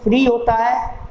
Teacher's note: फ्री में केवल एक वाउल साउंड आ रही है ई